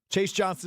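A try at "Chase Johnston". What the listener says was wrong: It's Johnston. You said Johnson.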